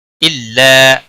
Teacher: الف مدہ ہے، ایک الف کے برابر کھینچ کر کریں گے.